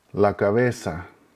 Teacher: Again, pay attention to the uniformity of the pronunciation of the vowels, the fact that the Z sounds like an S